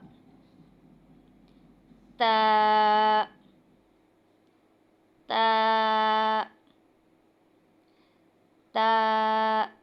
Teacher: ता जुबान की नोक ऊपर के दांतों के किनारे पर लगने से अदा होगा और यह भी दो हरफी हरूफ है।